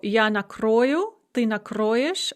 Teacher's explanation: the same conjugation in which you have an o the and the o is always under stress and then you add a first conjugation ending